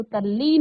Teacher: जब त के बाद सिर्फ ल की बात की गई है यहां पर। ल आए तो त का ल हो जाता है